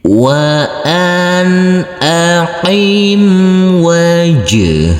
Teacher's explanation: Jadi huruf nun sukunnya ini huruf nun dibaca terang atau jelas. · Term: idhar